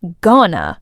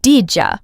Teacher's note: you might notice how going to becomes gonna, or how did you becomes didja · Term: reductions